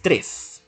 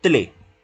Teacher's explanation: no produce tr, sino que la sustituye por una TL